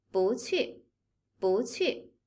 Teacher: When bu is followed by another fourth tone, it becomes a second tone.